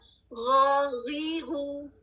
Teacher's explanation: غین میں بھی تفخیم پائی جاتی ہے, اس میں بھی سیم زبان پیچھے سے اوپر کی طرف اٹھتی ہے, منہ میں ایک ڈوم سا بن جاتا ہے